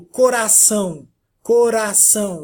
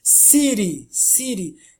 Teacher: quando a língua ela ergue que toca o céu da boca na parte frontal logo atrás dos dentes superiores é um toque bem de leve